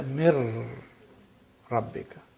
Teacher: Mir rabbika, noon completely is lost. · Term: complete assimilation